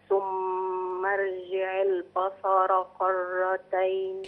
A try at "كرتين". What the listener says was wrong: دي كاف يا أمي، كرتين. يا أمي كا، لا كا، ك فتحة ك، كرتين. لا مش كرتين، كرتين.